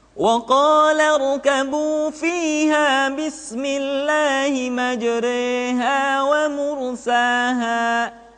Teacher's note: dalam surat hud ayat 41 ayatnya berbunyiism dibaca imalah dimiringkan Jadi huruf ro yang berharakat fathah dibaca miring ke kasrah sehingga bunyinya bukan majr tetapi maj sekali lagi perhatikan qha Bismillahi